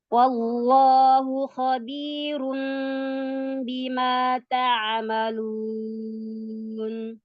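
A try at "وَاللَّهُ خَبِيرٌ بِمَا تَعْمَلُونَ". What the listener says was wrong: Ya, itu tebalkan lagi lafzul jalalah. Wallahu.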